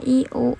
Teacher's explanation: Fonem vokal dapat dibedakan berdasarkan beberapa kriteria artikulatoris, yaitu berdasarkan posisi lidah, tinggi, tengah, rendah. Vokal tinggi close vowel, lidah dinaikkan mendekati langit-langit.